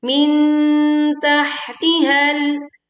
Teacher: dengungkan nun sukun ketemu ta dan tidak tergesa-gesa. Min makhraj ta sudah dibentuk saat membaca nun sukun.